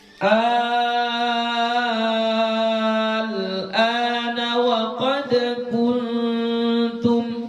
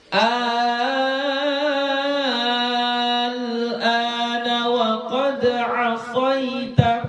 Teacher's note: Sama seperti mad lazim kalimi mutaqqal. Ini panjangnya kita baca 6 harakat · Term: mad lazim kalimi mukhaffaf